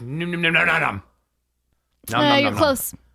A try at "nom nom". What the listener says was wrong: Your vowel isn't changing.